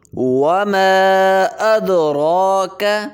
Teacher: ماں کے اوپر چھوٹی مد ہوگی، 3 دفعے مقدار اس کو کھینچیں گے · واو پہ ہونٹ کو گول کریں گے